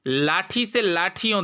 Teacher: देखिए ई छोटा हो रहा है